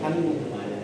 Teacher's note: Pag yung G, nag-meet yung M, naging NG po yung G.